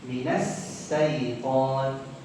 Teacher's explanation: Pertama, salah menyebutkan huruf shin. Shin biasa dibaca sin. Minas syaitan.